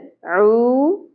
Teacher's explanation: عین وسط حلق سے ادا ہوگا۔